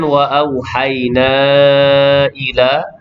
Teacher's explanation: panjang di situ mad jaiz munfasil 4 atau 5 harakat bacaan